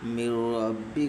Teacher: نون ساکن کے بعد حروف یرملون کے 6 حرفوں میں سے را ہے، اس لیے ادغام تام بلا گناہ ہوگا، یعنی اس نون کو نہ پڑھ کے سیدھے میم اور را سے ملا کر کے پڑھیں گے